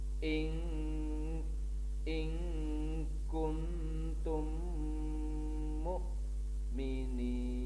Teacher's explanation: Memasukkan mim mati ke dalam huruf mim disertai dengan mendengung. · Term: idgham mimi